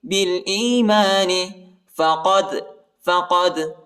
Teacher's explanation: بالایمان فقد قاف کو دال کے ساتھ ملائیں گے اور دال کو جھٹکے کے ساتھ پڑھیں گے، قلقلہ کریں گے